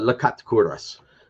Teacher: you speak the word with the stress on the end, on the last syllable